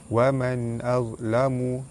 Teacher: Wa man azlamu, nun mati bertemu dengan hamzah, hukum dia izhar halki, dibaca terang jelas tanpa dengung